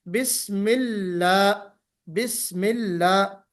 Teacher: बिस्मिल्लाह कहते वक्त बिस्मिल्लाह नहीं होना चाहिए, लाम पुर नहीं होना चाहिए